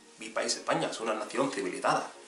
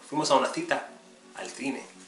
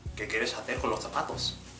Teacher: In Spain, in most places, it's not really going to be the S sound, it's going to be the TH sound, as in Thursday